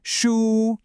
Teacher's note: A high flat first tone. Hold it like you're singing a note.